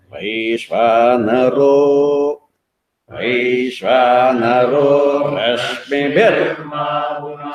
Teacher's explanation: The row should not go up. It's only middle. We have to be no stress on that.